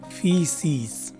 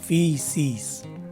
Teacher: the primary stress is right in the beginning of the word, and in some cases, a secondary stress in the second syllable as suggested by the lower set mark inside the parentheses.